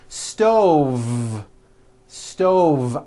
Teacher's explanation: I should have said stove stove I cook dinner on a hot stove with a voiced V